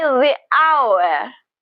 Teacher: That is silent. So the first sound that we hear in the word hour is a vowel sound. So we say the hour.